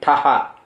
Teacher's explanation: ఈ టా మాత్రం మొదటిది కాదండి, రెండోది ఒత్తు టా. అది కూడా స్పష్టంగా పలకాలి. టహా కాదండి, ఠహ.